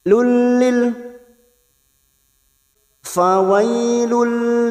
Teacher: nun sukun atau tanwin yang bertemu dengan dua huruf ini yaitu huruf lam dan huruf ro namanya bacaan Idam bila gunah hanya masuk tanpa mendengung tanpa ditahan lama-lama masuk pada huruf berikutnya yaitu huruf lam Lil fawailil [Tertawa] Lil